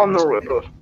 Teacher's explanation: no need to aspirate the H. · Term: silent H